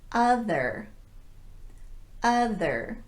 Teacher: it's in the stressed syllable so it's a little bit longer than the schwa vowel but the same tongue position and the same unrounded lips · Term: uh vowel